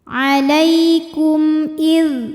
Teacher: Sebab ada mim sukun yang di hadapannya bukan huruf mim, bukan huruf ba. Ini hamzah ya. Maka mim sukun kita bunyikan dengan jelas. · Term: izhar syafawi